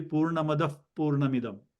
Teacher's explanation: the Visarga will be pronounced as if an F before the P of Purna